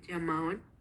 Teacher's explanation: la pronunciación de la doble L o de la L se escuchó como una fricativa palatal sonora